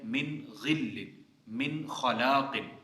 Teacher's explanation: امام یعقوب اور امام خلف جو ہیں وہ اظہار کرتے ہیں من غل، من خلاق، ٹھیک ہے، غنہ نہیں کرتے لیکن اظہار کرتے ہیں